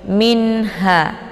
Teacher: Maka cara bacanya nunnya dibaca jelas. Jadi jelas bunyi nun sukunnya. Minha ya, cukup ditekan saja, tidak perlu ditahan. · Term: idhar halqi